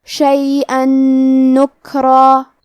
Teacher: ہم تنوین کو نون میں ملا کے غنہ اور تشدید کے ساتھ یہ حکم کو ادا کریں گے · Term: حروف الادغام بغنہ